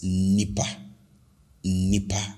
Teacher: I stretch the initial n because it's double n, right? Double n.